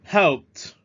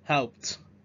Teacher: Ở cái cuối âm này chúng ta có âm t. Cái phụ âm đây là một cái phụ âm vô thanh.